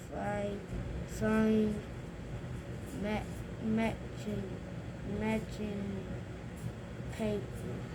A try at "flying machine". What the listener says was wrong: machine. Even though you have the CH there, it makes a different sound. It sounds like SH, doesn't it? Machine.